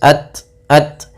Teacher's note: Kemudian belafal ta sukun, dia memiliki sifat syiddah dan sifat hamas, yaitu yang pertama suara ditahan, ya, kemudian alirkan nafas, at. Wa idza as-samaa'u furijat.